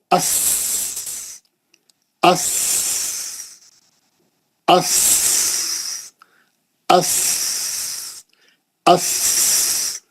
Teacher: सीन में कोई आवाज नहीं है, सीन पढ़ते हुए आवाज नहीं आती। अस अस इस उस, बारीक सीटी, दोनों दांतों को बंद करके उसके पीछे जबान की नोक ला के लगा के निकालना।